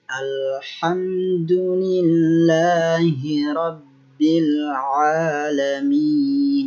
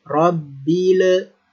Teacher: Jangan dipantulkan lamnya karena lam bukan termasuk huruf qalqalah atau huruf yang harus dipantulkan. Jadi harus kita tahan, jangan sampai memantul.